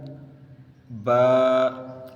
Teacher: دونوں ہونٹوں کے تر حصے سے، با ایک الف کھینچنا ہے